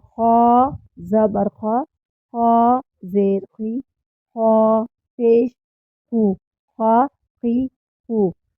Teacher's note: جو حلق کے اوپری حصے سے ادا ہوگا، ابتدائی حصے سے حلق کے ادا ہوگا، اور اس کو ادا کرتے وقت بھی ہاتھ کو کھینچیں گے نہیں۔